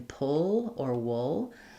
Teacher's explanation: a good example of the syllabic L, where there's a little bit of the sound before the L, like in pull or wool